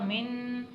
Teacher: नून साकिन आ रहा है, उसके बाद जीम आ रहा है तो इसलिए यहाँ पर गुन्ना होगा